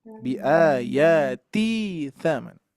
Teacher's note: Ti-nya, Bu, ketika digabung ti-nya jadi kurang panjang. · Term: 2 harakat